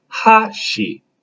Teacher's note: emphasis if it's a higher tone so it'd be hot she so you start high and bring it down